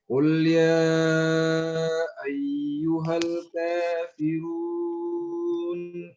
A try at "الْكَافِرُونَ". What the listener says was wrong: فخم الراء. الكافر رو.